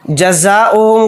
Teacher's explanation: زا الف زبر زا کو یہاں پر 4 الف کی مقدار مد کے ساتھ کھینچ کر پڑھیں گے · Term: مد متصل